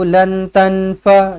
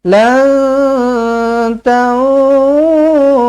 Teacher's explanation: nun kosong ni bukan nun sukun, nun kosong. Nun yang tak ada baris kan. So kena dengung lah.